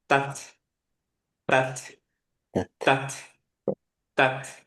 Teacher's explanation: ধরেন এইটা gums, tongue touch করলো, টাচ করেই টাংটা নেমে যাবে যাতে বাতাসটা বের করতে পারেন, এবং ফোর্সফুলি একটা বাতাস বের করবেন।